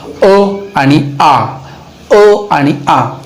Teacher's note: या कंठातनं ह्या दोन स्वरांचा उच्चार होत असतो, ते म्हणजे अ आणि आ. अ आणि आ, कंठाच्या किंवा जिभेच्या मागील बाजू, ही जी बाजू आहे या ठिकाणून याचा उच्चारस्थान निघत असतो.